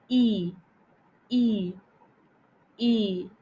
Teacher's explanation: close to the top and front of the mouth e letter lips will be stretched like we are smiling and not rounded · the tongue will be close to the top and front of the mouth e letter lips will be stretched like we are smiling and